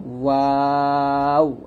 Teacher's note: দুই ঠোঁট গোল করে আমরা ওয়াওটা উচ্চারণ করব